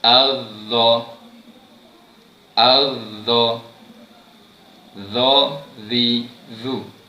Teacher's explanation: hujung lidah perlu dikeluarkan di antara 2 gigi gunting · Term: huruf dha